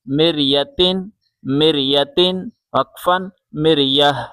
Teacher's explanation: میم را زیر مر، یا زبر یا، مریا، مریا، تا دو زیر تین، مریتن، مریتن، وقفاً مریہ۔ جب ہم وقف کریں گے، اسٹاپ کریں گے تو چھوٹی تا آپ کو دکھائی دے رہی ہے، یہ ہاں میں کنورٹ ہو جائے گی